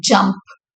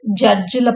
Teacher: So it starts with a complete stop and then releases with a fricative sound. Hence, it is a voiced post alveolar fricative.